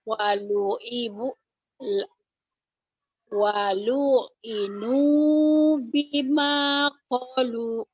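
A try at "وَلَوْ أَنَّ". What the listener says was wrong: Konya panjang. Lo-nya pendek. Walu inu bima kolu. Ibu tinggal latihan panjang pendek ini.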